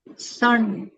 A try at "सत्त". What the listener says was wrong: नहीं, स तो है। दूसरा? स के बाद क्या है? हाँ, डबल त। सत्त। सत्त।